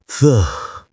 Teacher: I mean really exaggerate it. Say, th, with your tongue between your teeth, making it very breathy and very long. Hold it for a few seconds. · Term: TH sound